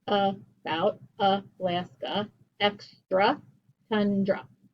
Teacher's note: that a is going to sound like a schwa